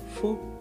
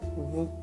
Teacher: bedakan bunyi yang suara angin saja dengan bunyi yang pakai pita suara